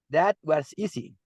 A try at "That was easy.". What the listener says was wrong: Remember that this part of easy, you need to raise your voice a little bit, beginning easy. See? Look at the dot and then